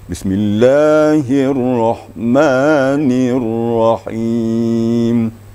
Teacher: Ma 2 ketukan ya. Jangan panjang sampai 3 ketukan atau malah 4 ketukan ya. Itu mad asli.